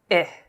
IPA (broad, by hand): ɪ